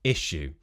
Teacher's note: when we have a s sound and a y sound, and they become sh, like in shoes